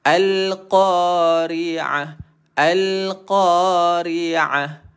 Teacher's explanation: Dia akan rasa di tengah kerongkong untuk huruf ain.